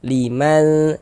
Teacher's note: Jadi bunyi nun sukun atau bunyi tanwinnya dibaca samar dengan bersiap-siap kita masuk ke dalam huruf ikhfanya. Nah, kemudian juga disamarkan disertai dengan dengungan, digunahkan. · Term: ikhfa hakiki